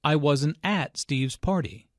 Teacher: notice that the emphasis here is on at although prepositions normally have weak stress in this case at means there I wasn't there this